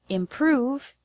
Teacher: The word improve has the stress on the second syllable, prove.